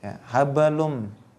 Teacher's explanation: ini ada tanwin bertemu dengan huruf mim. Ya, nah ini hukumnya adalah idgham bi gunnah.